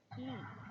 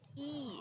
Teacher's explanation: the advancement is front and the lip rounding is obviously unrounded